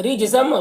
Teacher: را کو باریک پڑھیں گے، جیم میں قلقلہ کریں گے